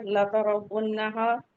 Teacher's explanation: را کو ہیوی پڑھیں گے کیونکہ را پہ زبر ہے. لام اور تا کو جلدی پڑھیں گے.